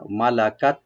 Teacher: লাম ওপেন থাকবে, আর তাতে একটা হামস করবো আমরা